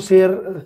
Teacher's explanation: ਕੇਵਲ ਦੰਤੀ ਸ ਤੋਂ ਹੀ ਕੰਮ ਚਲਾ ਲਿਆ ਜਾਂਦਾ ਹੈ